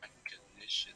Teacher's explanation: the stressed syllable of this word is the third one